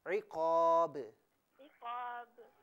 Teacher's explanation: عقاب میں چونکہ آپ با کو ساکن کر رہی ہیں نا تو یہاں قلقلہ کیجئے